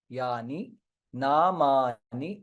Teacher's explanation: ना is dirgha ma is also dirgha ni hrasva